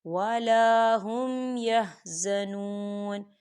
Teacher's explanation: واو ساکن سے پہلے پیش ہے، تو یہاں پر واو مدہ ہو رہا ہے، تو اسے ہم دو حرکت کے برابر کھینچ کے پڑھیں گے